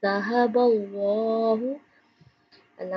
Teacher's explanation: اللہ موٹا پڑھیں گے کیونکہ لفظ اللہ سے پہلے حرف کے اوپر زبر آ رہی ہے